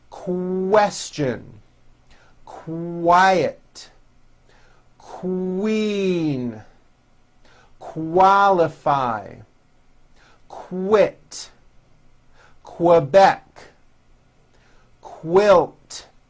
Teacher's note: the word quick is pronounced with a k and a strong W sound · Q sounds are made with the k sound C and the W sound W put together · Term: the Q sound